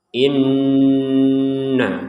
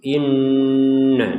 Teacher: nun bertasydid ini harus kita baca dengan dengungan, 100% dengung